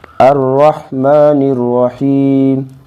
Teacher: تو اس کو یوں پڑھیں گے، الرحمن الرحیم، نون کو را میں ملائیں گے کیونکہ را مشدد ہے